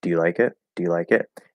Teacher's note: now do can reduce to duh it doesn't have to there's nothing no requirement to reduce it but it commonly does